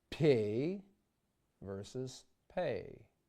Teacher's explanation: For example, let's compare PO in Russian versus PO in English or P in Russian versus pay in English. The Russian consonant requires a split second longer to form. holding the lips together and allowing more pressure to build up behind them. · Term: Russian P